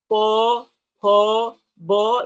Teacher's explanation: वो जो निकल के आता है अंदर से, वो ओठ को स्पर्श करके निकलता है, इसलिए ऊ ऊ प फ ब, ये देखिए सब ओष्ठ में ही स्पर्श होता है, इसलिए सबको ओष्ठ स्थान कहा गया है।